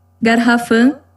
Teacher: garrafa sílaba tônica em ra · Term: paroxítona